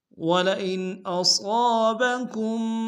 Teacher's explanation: وَلَئِنْ میں حمزہ کو نون کے سامنے آئیں گے، یہاں پہ اظہار ہوگا۔